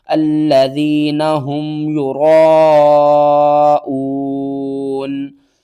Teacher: را کے اوپر زبر ہے، را کو ہم موٹا کر کے پڑھیں گے